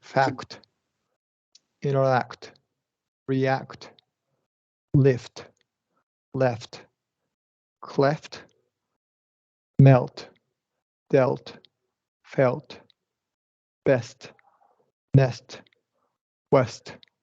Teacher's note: at the end of words in these consonant clusters, the true T has to be released